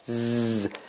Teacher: The tongue is not out. Z. But it is attached to the upper teeth.